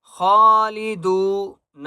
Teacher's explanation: ہم فیہا خالدون، واو مدہ ہے، دال کو ایک الف کی مقدار کھینچ کر پڑھیں گے اور خا کو موٹا کریں گے۔ خالدون، وقف کریں گے۔